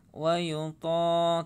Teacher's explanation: to-nya matobi'i panjang 2 harakat.